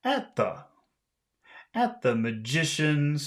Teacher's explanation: because at is the beginning of a phrase, we have to make that high. At the. At the magicians, and then remind ourselves by the time we get here, we should be very low. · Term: high tone